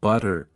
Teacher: The T between vowels often becomes a D sound, so butter sounds like buttier.